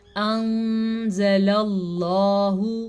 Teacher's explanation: انزل اللہ، نون ساکن کے بعد زا حروف اخفا میں سے ہے تو نون ساکن کو ہم چھپا کے پڑھیں گے اور غنے کے ساتھ پڑھیں گے